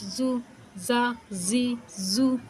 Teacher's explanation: زا میں سٹی وہ آواز سختی کی آنی چاہیے